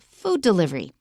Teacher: we don't stress delivery we only stress food